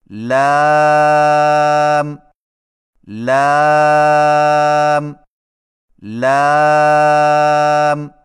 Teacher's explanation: زبان کے باریک کنارے کو اوپر والے دانتوں کے مسوڑوں سے لگا کر باریک آواز میں پڑھیں، یعنی لام لام لام.